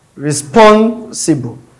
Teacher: So it is on the second syllable stress. And mind you, the BLE ending words is always on the third syllable from the end.